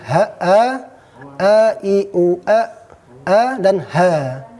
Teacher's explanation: Ha keluar dari pangkal tenggorokan.